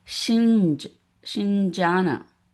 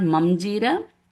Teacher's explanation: So as per our rule here, Ja, cha, ja, cha, meaning the Anuswara should sound nj sound